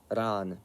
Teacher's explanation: R is sort of a alveolar tap/trill sound, so the same as in Spanish or Italian or Russian